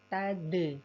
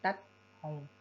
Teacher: Huruf dal itu memang satu makhraj dengan huruf ta, tapi sifat kurang lebih sama-sama tidak mengalir suara, tapi untuk dal tidak mengalir udara dan dal memiliki sifat qalqalah saat dia sukun